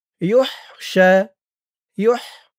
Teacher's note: ওকফ করার কারণে মধ্যে আরজি ৩ আলিফ টান